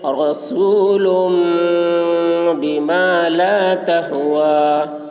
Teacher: تنوین کو میم سے بدل کر غنہ اور اخفا کے ساتھ پڑھیں گے. اس کو اقلاب کہتے ہیں.